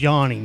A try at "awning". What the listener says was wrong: Almost yawning. If you just drop the Y, you got it perfectly.